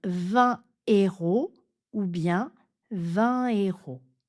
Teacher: on ne fait surtout pas la liaison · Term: H aspiré